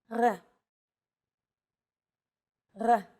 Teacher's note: It's actually closer to the German or French R, but without the roll.